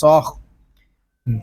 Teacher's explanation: صاد یہ حروف مستعلیہ میں سے ہے، اس کو پر یعنی موٹا پڑھیں گے